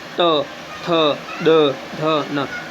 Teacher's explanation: हम त बोलते हैं तो हमारी जो जीभ है वह दांतों को स्पर्श करती है · त, थ, द, ध, न, ये वर्ण किससे बोले जाते हैं, दांतों से बोले जाते हैं। इसको संस्कृत में हम देखें तो दंतन्य कहा जाता है।